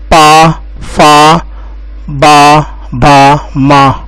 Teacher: पा, फा, बा, भा, मा, ये होंगे आपके ओष्ठ से व्यंजन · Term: ओष्ठ व्यंजन